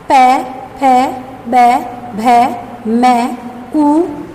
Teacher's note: इनका उच्चारण दोनों होठ से किया जाता है। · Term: ओष्ठ्य